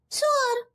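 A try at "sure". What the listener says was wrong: नहीं, नॉट सुअर, it's श्योर। देखिए बोलिए श्योर। देखिए डिफरेंस है सा और शाह में। फाइन, आप जरा चोच निकालिए ऐसे।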